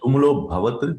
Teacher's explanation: when we pronounce it, then we don't pronounce the a part. It's deleted.